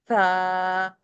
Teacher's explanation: Soft letter ہے. ہماری زبان کی نوک سامنے والے دانتوں کے سرے پہ لگتی ہے اور ہوا کو لاک کرتی ہے اور ہم پڑھتے ہیں تھا.